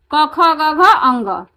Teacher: पांचों का उच्चारण स्थान किस चीज से होता है? कंठ से होता है।